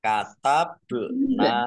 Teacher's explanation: ba sukun bacaan qalqolah atau memantul ditampakkan pantulannya · walau Anna Nun tasdid dibaca gunah atau mendengung ditahan dua harakat Nun fathah Alif Mad thi'i panjang dua harakat